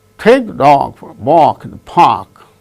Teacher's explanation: Only take, dog, walk, park. Only these words gain stress because they are the content words and others are form words.